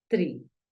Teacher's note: la i la vamos a pronunciar un poquito más larga